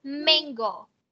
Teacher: không phải âm a nha, mặc dù nó là chữ a, nhưng mà cái âm nó đọc là e